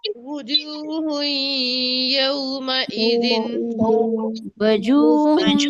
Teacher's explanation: واو میں ہونٹوں کو گول کرتے ہیں، پیش میں بھی ہونٹ گول ہوں گے